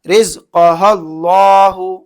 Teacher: اللہ کے لام سے پہلے زبر ہو جائے گا تو یہاں پھر اللہ کے لام کو موٹا پڑھیں گے